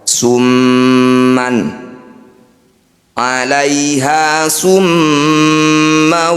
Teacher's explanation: mim bertasdid disebut bacaan gunah musyaddadah bunyi mim didengungkan atau ditahan dua harakat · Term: gunnah musyaddadah